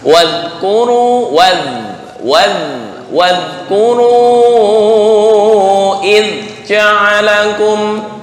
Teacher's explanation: وَاذْكُرُوا Masih memantul. Zal bukan huruf qalqalah, tapi biasa ya, lentur di ujung lidah dengan ujung gigi atas.